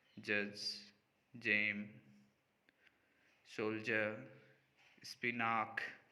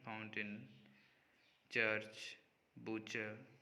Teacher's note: a stop plus a moment through a fricative position